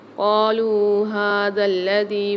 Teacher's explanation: واو مد آ رہی ہے، لام کھینچ کے پڑھیں گے، ہا کے اوپر کھڑا زبر آ رہا ہے، اس کو بھی ایک الف مدار کھینچ کے پڑھیں گے۔